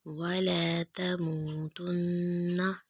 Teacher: نون مشدد پہ غنہ کریں گے، آواز کو نا کے نرم والے حصے میں رکھ کے